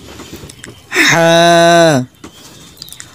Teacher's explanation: হাটা গলার ভিতরে মধ্যখান থেকে উচ্চারণ হবে।